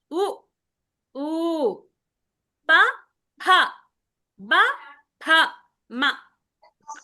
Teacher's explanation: ఎక్కడి నుంచి వస్తుంది? పెదాల నుంచి వస్తుంది. ఓష్ట్య అంటే పెదాలు. ఓష్టాలు అంటే పెదాలు అన్నమాట. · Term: ఔష్ట్య